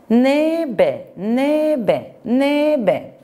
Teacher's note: Telaffuz ederken N ve B sesleri yan yana, art arda. Yan yana olduğu için dişten dudak ünsüzüne geçmem gerekir.